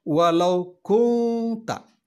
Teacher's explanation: Nun mati bertemu dengan huruf ta. Huruf ta adalah salah satu dari huruf ihfa, maka dibaca ihfa, mendengung.